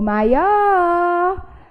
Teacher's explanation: Quando eu chamo a palavra, eu percebo que a tonicidade de fato recai sobre a última sílaba. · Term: sílaba tônica